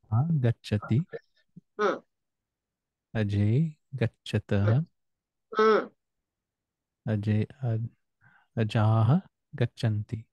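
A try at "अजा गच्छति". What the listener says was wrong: Samyak, samyak.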